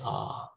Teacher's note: my tongue actually touches the bottom of my mouth when i say ah it goes really low